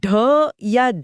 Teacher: ऐसा लगता है जैसे जीभ पीछे जाकर झटके से आगे गिर रही है। एकदम किसी छलांग की तरह। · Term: उत्क्षिप्त व्यंजन